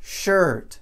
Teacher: E a pronúncia é exatamente a mesma coisa. Porque o vogal é o R, não o I